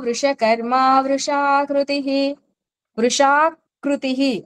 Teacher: కృ కి బిగి రాకూడదు ఎందుకంటే అది సంయుక్తాక్షరం కాదు కృ అనేది గుణింతంలో లెటర్ క కి కి కు కు కృ అంటాం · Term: ఋత్వం